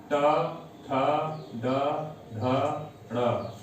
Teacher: मूर्धा से, और इनको हम मूर्धन्य वर्ण भी कहते हैं